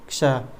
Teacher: क्ष में क और स की आवाज़ हमारे आ रही है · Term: संयुक्त व्यंजन